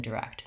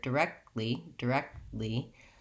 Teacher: I am kind of doing the K and T, but I'm not releasing either one. So you won't really hear the kt like you do in direct.